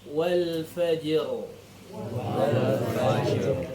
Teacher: jinnya dipantulkan dulu baru masuk ke huruf ro sukunnya